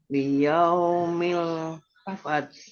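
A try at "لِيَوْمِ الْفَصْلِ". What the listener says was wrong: Ya, ada L-nya jangan hilang. Nggak apa-apa memantul soknya, tapi L-nya jangan hilang. Liyaumil fasl. Ada L-nya. Fasl. Iya, S-nya biasa. Fasl.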